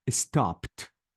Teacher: I deleted the e sound and I changed the D to T